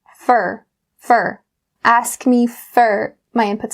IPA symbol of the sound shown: fər